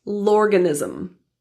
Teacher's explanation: The L from cell links to organism